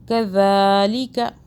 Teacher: ذال کو سافٹ میں، زبان کو ہلکا سا باہر کریں